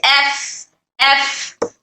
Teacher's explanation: जब भी हम इन हुरूफ को अदा करते हैं तो पस्ती और नरमी से अदा करते हैं और इसमें एयर फ्लो यानी सांस जारी रहता है। जब भी हम इन हरूफ को अदा करते हैं तो इन हरूफ को अदा करने में आवाज नरम हो जाती है। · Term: सिफ़त हमस